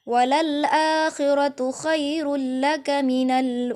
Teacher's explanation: tanwin bertemu dengan salah satu huruf bila gunah yaitu lam khairaka langsung tidak ada dengung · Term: idgham bila ghunah